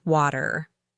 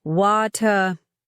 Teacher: in American English, we say water with a hard t that sounds almost like a d. Water. In British English, particularly in RP, they pronounce the T more clearly.